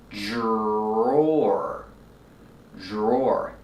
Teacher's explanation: The dr makes a Jj sound with a voice like juice and jump. J plus the R J and the or like floor and more.